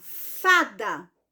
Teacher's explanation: a sílaba tônica da palavra fada é justamente a penúltima sílaba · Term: paroxítona